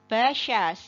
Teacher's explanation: syin itu makhrajnya dari Tengah lidah yang diangkat ke langit-langit diangkat tinggi tapi tidak menempel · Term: shin